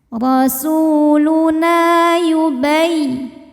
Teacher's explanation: Na dihukumi dengan mad tabi'i zahiri. Sebab ada alif yang sebelumnya berbaris fathah. Maka huruf nun panjang 2 harokat.